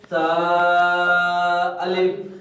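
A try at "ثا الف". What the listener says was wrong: یہ پورا 1 الف کرنا ہے، اس سے زیادہ لمبا نہیں کرنا، سا اتنا لمبا نہیں کرنا۔ دیکھیں، سا الف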